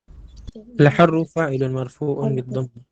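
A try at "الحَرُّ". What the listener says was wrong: Iya, bukan al-hurru itu ya, al-harru yang benar bacanya.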